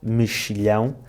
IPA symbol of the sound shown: ʃ